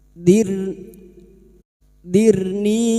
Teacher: [Musik] Anzirni ro sukun yang didahului kasrah kita baca tarkik tipis